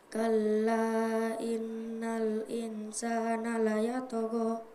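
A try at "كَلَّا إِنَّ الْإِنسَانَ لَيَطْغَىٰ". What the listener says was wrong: Iya, kalla in. Ada dua ya, nun tasdid dan nun apa? Iya, nun sukun. Jadi ditahan karena nafasnya tadi kayak terputus-putus ya, tidak mampu. Jadi ditahan ya.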